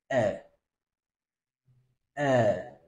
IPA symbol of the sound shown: ɛ